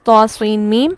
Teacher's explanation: طا سین میم میں بھی سین کے پڑھتے ہوئے اختتام پر غنہ ہوتا ہے